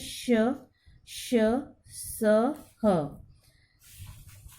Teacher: इन व्यंजनों के उच्चारण में मुख से गर्म श्वास वायु रगड़ खाती हुई निकलती है। इसी कारण इन्हें ऊष्म व्यंजन कहते हैं।